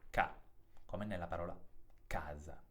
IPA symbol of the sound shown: k